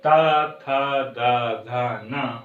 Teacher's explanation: हम जब बोलते हैं तो यह जिह्वा जा करके दांत को छूती है, इसीलिए इस वर्ग का नाम हो जाता है क्या, दंत व्यंजन।